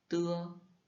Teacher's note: on le prononce entre un D et un T, mais sans une aspiration, donc pas de souffle. Donc, un astuce, ce serait de mettre ta main devant ta bouche et il ne doit presque ou pas y avoir d'air.